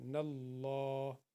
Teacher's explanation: یہ اللہ سے پہلے نون کے اوپر زبر ہے، یہ موٹا پڑ جائے گا